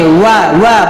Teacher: দুই ঠোঁট গোল করে সামান্য খোলা রেখে ওয়া ওয়া বলেন